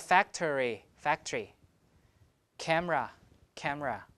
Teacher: So the schwa tends to be deleted